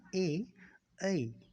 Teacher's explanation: जब ए और ऐ का उच्चारण करते हैं तो हमारी सांस है वो कंठ और तालु के द्वारा बाधित होती है। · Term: कंठ तालव्य